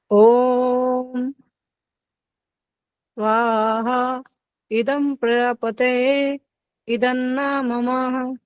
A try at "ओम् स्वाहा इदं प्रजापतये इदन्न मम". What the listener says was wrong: तरीका ठीक था, लेकिन जा वाला प्रजापति में जा नहीं सुनाई दिया, पता नहीं क्या सुनाई दिया वो।